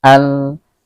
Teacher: Alif lam ini dinamakan alif lam qamariyah karena kita berjumpa dengan salah satu huruf qamariyah yakni ha. Maka cara pengucapannya jelas. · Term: izhar qamariyah